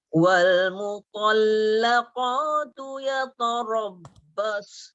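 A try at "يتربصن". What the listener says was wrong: Yata nipis.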